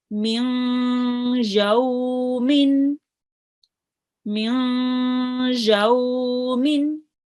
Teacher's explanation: I did not ignore the noon. I had a nasal sound here, and I prolonged it for 2 seconds. Okay, and then quickly I joined on to the ya tashdid.